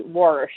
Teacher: that's called intrusive R when people say worsh